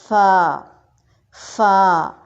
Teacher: ثنایا علیہ کا کنارہ یا سرا جب نیچے والے ہونٹ کے تری والے حصے سے لگتا ہے تو فا ادا ہوتا ہے۔ نیچے والے ہونٹ کے شکم کہہ لیں آپ، پیٹ کہہ لیں یا تر حصہ، کچھ بھی کہیں وہ ٹھیک ہوگا، وہاں سے فا ادا ہوگا۔